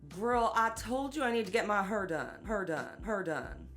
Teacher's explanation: a feature in African American English in places like St. Louis and Memphis called the near-square nurse merger, or R centralization.